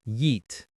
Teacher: The pronunciation is just one syllable, and it has a long E sound.